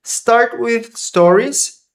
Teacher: É bem sutil esse with, não precisa fazer um sopro, é só um with. Pode só tocar a língua.